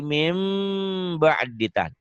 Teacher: Mim tapi sertai bindeng sedikit. Min ba'di jadi mim ba'ditan. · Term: iklab